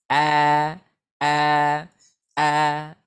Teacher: Maka keluarlah bunyinya tipis. Suaranya tidak jadi gemuk gitu ya. Jadi bergema tidak. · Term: huruf yang tipis